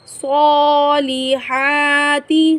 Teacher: وعملوا، صاد کو ہم ہمیشہ پر پڑھیں گے، صاد حروف مستعلیہ میں سے ہیں۔ صالحات، صاد اور ہا کو ہم ایک الف کی مقدار کھینچیں گے، کھڑی زبر کو ہم ایک الف کی مقدار لمبا کر کے پڑھتے ہیں